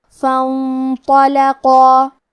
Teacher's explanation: حرف القاف کی ادائیگی زبان کی جڑ اور تالو کے نرم حصے سے ہے. قاف حروف التفخیم میں سے ہے لہذا ہمیں قاف کو موٹی آواز میں پڑھنا ہے. · ہمیں یہاں مد الف کو تفخیم سے مطلب بھاری آواز میں ادا کرنا ہے. فانطلقا. · حرف الطو کو تفخیم سے مطلب موٹی آواز میں پڑھیں گے